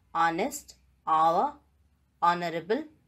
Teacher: the vowel sound has become dominant and ha sound has been deleted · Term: silent letter H